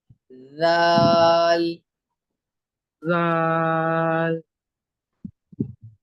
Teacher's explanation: जाल। जबान जबान की नोक निकाल के पढ़ेंगे, ऊपर के दांतों में लगा के, थोड़ी सी जबान की नोक